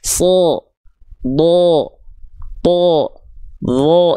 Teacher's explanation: tebal itu vokalnya seperti condong seperti ya bukan betul-betul tapi condong seperti vokal O.